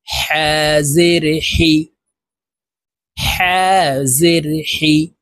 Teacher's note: এটি বড় হা হলকের মধ্যখান থেকে উচ্চারণ হবে, হার মাখরাজ হলকের মধ্যখান থেকে হবে।